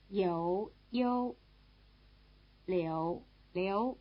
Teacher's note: you hear something approaching a simple U sound after the semivowel in the first and second tone names, so that the spelling without the O might be better for both of them.